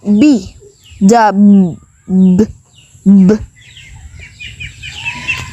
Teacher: with letter b in letter b the b sound is voice the vocal chords vibrate while producing it and is the counterpart to the unvoiced p sound